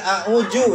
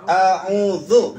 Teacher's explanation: Itu ujung lidah kita berada di sela gigi atas gigi bawah. Digigit gigi atas gigi bawah.